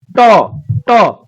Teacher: ट वर्गीय जितने भी होते हैं उनका उच्चारण मुर्धा होता है · देखिए जीभ जा रहा है अंदर, ऊपर तालु से सट रहा है, अंदर से आवाज निकल रहा है।